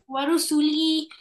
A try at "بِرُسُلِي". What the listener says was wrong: واو नहीं है, बा है برسلي.